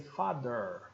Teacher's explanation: o americano vai dizer Father vai até o r